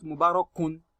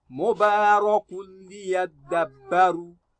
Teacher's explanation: You drop your tanween because of the rule of idgham bighairi gunna.